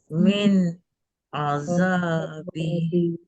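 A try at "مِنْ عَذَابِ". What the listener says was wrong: Lama sangat pause lagi sekali. Min azabi.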